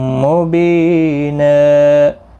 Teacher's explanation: 2 زبر کو بدل کر ایک زبر کے ساتھ وقف کریں گے، ایک الف کی مقدار کے برابر کھینچ کر پڑھیں گے، اور ملانے کی صورت میں ادغام مع الغنہ ہوگا، تنوین کے بعد یرملون کا واو آیا ہے۔ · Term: وقف بالابدال